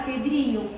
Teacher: E na palavra Pedrinho, qual é a tônica? Dri, responderam todos